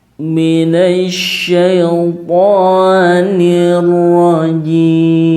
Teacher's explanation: Kemudian, ya, karena mad arid lis-sukun, ya, huruf atau bunyi mi pada kata ar-rajimi, ya, dibaca ar-rajim, maka menjadi hukum bacaan mad arid lis-sukun. Jadi panjang, ya, 5 atau 6 harokat.